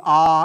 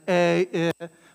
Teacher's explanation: in classical Latin, they do make a distinction between the long, the ah, and the short A